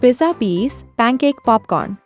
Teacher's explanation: the letter P makes a fun popping sound it's like a little puff of air just like when we pop a bubble when we say p